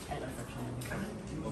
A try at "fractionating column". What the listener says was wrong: It is a fractionating column, not fractioning column. Fractionating column to the distillation flask.